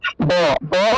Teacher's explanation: ব, ব দুইটা ঠোঁট লাগিয়ে ব উচ্চারণ করতে হয়, বর্গীয় ব উচ্চারণের ক্ষেত্রে দুইটা ঠোঁট লাগাতে হয়। কিন্তু যখন আপনি ঠোঁট না লাগিয়ে ব উচ্চারণ করবেন তখন উচ্চারণটা আসে ওয়া, ওয়া, এরকম উচ্চারণটা আসে ওয়া।